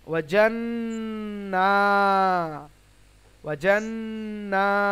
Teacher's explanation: জি, নুন এবং মিমের উপর যদি তাসদীদ থাকে তাহলে ওয়াজিব গুন্না হয়। তাহলে নাকের মধ্যে আবশ্যিকভাবে গুণ, নাকের মধ্যে আওয়াজ নিয়ে যেতে হবে